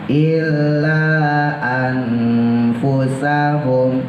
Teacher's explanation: Kuda-kudanya en menuju eng, tapi jangan sampai eng. Illa anfusahum, jadi bukan ang ya, nggak semua ikhfa itu ang. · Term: ifa ausat